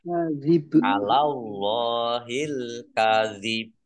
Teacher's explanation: Kemudian baknya dibaca sukun karena wakof dan kolkolah. Ditampakkan kolkolahnya, ditampakkan pantulannya.